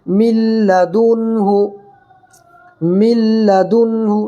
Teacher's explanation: اب یہاں پر لام کی صورت میں ادغام بلا گنہ کریں گے · اور یہاں پر دال نون پیش دن، دیکھو نون ساکن کے بعد حروف حلقی کے 6 حرفوں میں سے ہا آ رہا ہے، اس لیے یہاں پر اظہار کر کے پڑھیں گے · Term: ادغام لام